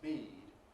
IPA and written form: biːd (bead)